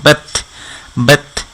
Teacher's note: জিব্বার আগা উপরের দাঁতের গোড়ার সাথে লেগে তা, ঠিক ওইখানে গিয়ে থেমে যাবে। বা সাউন্ডটা গিয়ে তাতে এভাবে থেমে যাবে, বেত বেত।